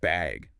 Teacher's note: just bag with a rising tone